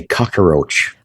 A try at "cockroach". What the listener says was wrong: You gave a little extra. Give a little extra syllable there.